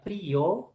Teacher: en el caso de la palabra frío, la I se separa de la O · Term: hiato